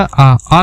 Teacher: आ का जब उच्चारण करेंगे तो इसमें पूरा मुंह खुला हुआ होता है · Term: विवृत